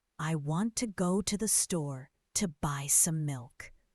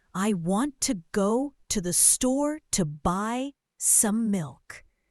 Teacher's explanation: the stressed words are want, go, store, buy, and milk. The other words, I, to, the, to, some, are very quick and soft. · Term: stress-timed language